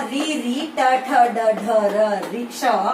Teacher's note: इनका उच्चारण स्थान मूर्धा और कहा जाता है मूर्धन्य वर्ण